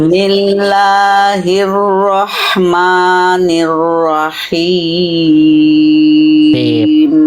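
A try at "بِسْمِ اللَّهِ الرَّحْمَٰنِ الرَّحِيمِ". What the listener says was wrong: Udah bagus, tinggal tipiskan mim, jangan mo. Tapi ma jangan mo. Bismillahirrahmanirrahim. Tapi ma. Bismillahirrahmanirrahim.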